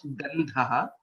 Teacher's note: One is identifying the Alpa Prana and Mahaprana correctly and pronouncing it correctly. Gandhaha, Tha is a Mahaprana and hence it becomes Gandhaha